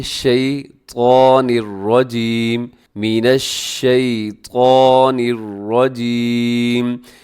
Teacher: حرف طا، اسے آپ نے موٹا پڑھنا ہے، اسے کبھی بھی باریک نہ کیجیے گا، یہ موٹے حروف میں ہے۔